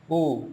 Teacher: व्रत मुख क्यों बोला गया है बोलकर देखिए छोटा यू यू हमारे होंठ की आकृति व्रत सी हो रही है